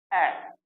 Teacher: आता है यह केवल अ आप यदि इसका उच्चारण करेंगे तो मुख में जो हमारी जीवा है व मध्य स्थिति में रहती है बीच में स्थिर रहती है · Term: मध्य स्वर